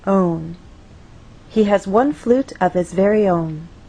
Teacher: so the overall pattern stays the same till the end and on that final content word our voice will glide down